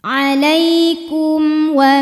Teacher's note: Kum ada hukum izhar syafawi karena mim sukun menghadapi huruf selain mim dan ba, yaitu huruf waw, maka mim sukun dibunyikan dengan jelas.